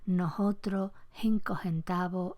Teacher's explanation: La aspiración de la S intervocálica se encuentra en muchas hablas costeras americanas